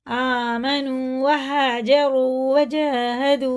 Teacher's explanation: आमनू, वाव को खींच के वाव साकिन से पहले पेश है तो उल्टे पेश की तरह इसे खींच के पढ़ेंगे, और खड़ा ज़बर भी खींचेंगे। अलिफ और वाव को खींच के पढ़ेंगे, नून को और मीम को बिल्कुल नहीं खींचेंगे।